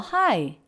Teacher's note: hi has sort of an up-down shape and then a bit of a break it could be considered